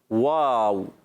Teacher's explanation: واو کا مخرج ہے دونوں ہوٹوں کی گولائی سے، واو، ٹھیک ہے؟